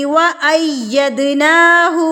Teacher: دال حروف قلقلہ میں سے ہے تو یہاں پر بھی ہم قلقلہ کریں گے، اس کو ہلا کے پڑھیں گے. وَأَيَّد دال ید اید آواز کو روکنا نہیں ہے، غلط ہے یہ.